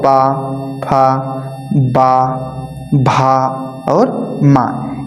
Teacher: प वर्ग जो होता है ये ओष्ठ से ही तो निकलता है। ओष्ठ से है ना इसका उच्चारण करने की जो प्रक्रिया होती है वो ओष्ठ के माध्यम से होती है।